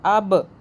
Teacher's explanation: آگے دیکھ لیں حمزہ اور با کو جوڑیں گے، حمزہ با زبر اب، با پہ قلقلہ جھٹکا دیں گے